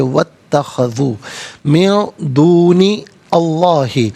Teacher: واو پر زبر، اسے اتخذو کی تا کے ساتھ ملائیں گے، درمیان میں سے الف نی حمزہ کو حذف کیا جائے گا ، اسے ہم پڑھیں گے واتخذو من دونی اللہ، من نون